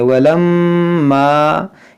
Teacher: मीम मुशद्दद है, इसमें गुन्ना करेंगे।